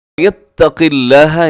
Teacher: اس میں قاف موٹا ہے اگرچہ اس کے نیچے زیر ہے لیکن لفظ اللہ باریک ہوگا